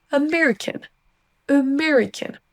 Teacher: Et américaine n'existe pas, c'est bien son schwa au début.